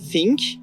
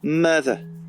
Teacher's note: le TH sera formé plus à l'avant de la bouche et deviendra une consonne fricative comme /f/ ou /v/